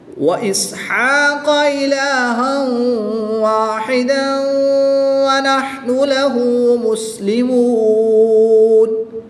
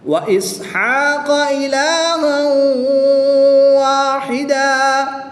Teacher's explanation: جب ملا کر پڑھیں گے تو غنہ ہوگا، جب ملا کر نہیں پڑھیں گے، وقف کریں گے تو پھر غنہ نہیں ہوگا